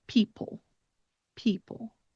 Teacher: you close your jaw a little bit and you reduce your emphasis when you end with the end of the word people